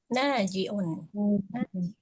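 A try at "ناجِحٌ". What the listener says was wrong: Itu ha ya, najihun,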